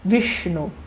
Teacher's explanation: a ponta da língua lá no céu da boca